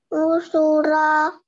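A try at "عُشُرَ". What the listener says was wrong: Nah, itu masih panjang akhirnya. Pendek semua ya. Tusu'a. Usyura. Umura. Pendek-pendek.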